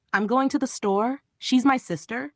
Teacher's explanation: Falling intonation. Here the voice goes down at the end.